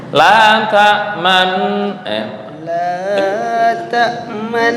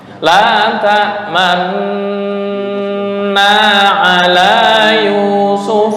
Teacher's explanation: tuh bibirnya monyong. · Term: ismam